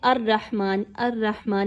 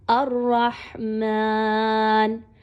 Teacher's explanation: یعنی آپ نے الرحمن، الرحمن نہیں پڑھنا، بلکہ اپنی زبان کو اوپر کی طرف اٹھانا ہے اور را کو پر پڑھنا ہے